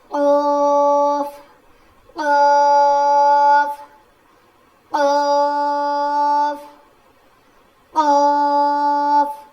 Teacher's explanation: زبان کی جڑ اور اوپر کے تالو سے قوف ادا ہوتا ہے. تو جو ہماری چھوٹی زبان ہے نا، جو تالو ہے نا، وہ تھوڑا سا اوپر اٹھے گا جب ہم یہ پڑھیں گے.